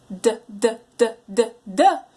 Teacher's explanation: So I teach them that for the T and the D sound, the tongue is repeatedly hitting right behind their top teeth. So and the difference between the T and the D sound is the T has no voice, or your vocal folds don't move when you're producing it, but the D does.